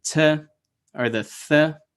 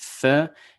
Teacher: The T, as opposed to the soft TH, Th, is a little bit further back. Your tongue is a little further back, whereas with like a Th, like thank you, you're kind of splitting the teeth in that sense, right?